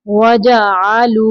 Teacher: वाव साकिन के पीछे पेश है वाव मद्दा, 2 साकिन तक खींचेंगे इसको, यानी लंबा करेंगे